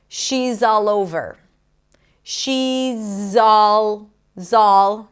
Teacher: The Z of is becomes the beginning of all